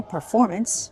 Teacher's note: hard for some people to get the right stress on the second syllable